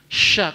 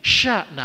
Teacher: lidahnya ketemunya tengah lidah ketemu langit-langit atas. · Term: shin